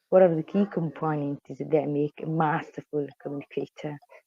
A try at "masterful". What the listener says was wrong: Okay, we see again some R sounds. So it's a masterful, more masterful. We need just a slightly firmer R sound for American English on masterful.